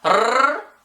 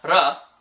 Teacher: So it's more of a rrr for like a very trilled one, or like a r for a not very trilled one.